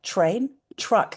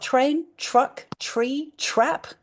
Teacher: when you say it out loud, it sounds like train and it sounds like you're doing a ch sound